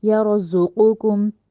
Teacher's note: یر ذقو یعنی زا کو اب آپ لوگوں نے نرمی سے ادا نہیں کرنا، ٹھیک ہے، زال کو زا نہیں بنانا اور زا کو زال نہیں بنانا، زال نرمی سے اور زا سختی سے۔ یرزقکم، ذقو میں جو قوف ہے اس کو موٹا کر کے پڑھنا ہے، ذقوکم نہیں کہنا۔